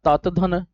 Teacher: जीभ जब दात को टच करेगी तब जाके त बनेगा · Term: त वर्ग